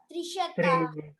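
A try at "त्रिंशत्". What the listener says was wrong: Trimshat. There is a halanta, so Trimshat.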